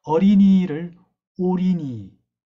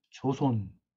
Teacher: 어린이를 오리니라 발음을 한다든지 먹을 게를 먹을 게라고 한다든지 어머니는 오모니, 어서는 오소, 떡은 똑, 개성은 개송, 그 다음에 조선은 조손, 이와 같이 발음하는 경향이 있습니다. 즉, 어를 오에 굉장히 가깝게 발음한다